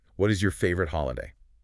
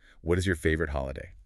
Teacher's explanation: Focus on how the question intonation rises a little at the end.